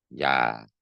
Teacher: 이를 발음하려는 자세에서 아를 동시에 발음해버리면 어떻게 돼요? 야가 됩니다. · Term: 반모음